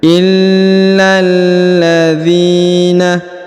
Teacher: huruf lam yang berharakat tasdid illalladzina ini alif lam qamariah ya pertemuan antara lam dan lam maka ditahan dan ditekan ya illalladzina huruf dzi dipanjangkan dua harakat karena di depannya terdapat